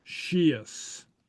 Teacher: note the S and a slender vowel is pronounced like an SH